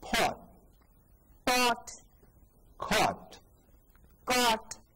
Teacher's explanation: Your lips were rounded when you said the vowel correctly.